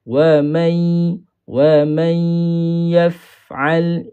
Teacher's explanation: Sebab yang melibatkan huruf fa ini bukan 2 bibir, tetapi bibir bawah dengan gigi kacip atas. Walaupun dia masuk dalam perbahasan asy-syafatain, tetapi bukan bermaksud 2 bibir tu kena rapat, tak. · Bila kita baca huruf fa, mulut kita tidak tutup. So angin akan keluar.